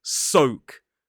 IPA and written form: səʊk (soak)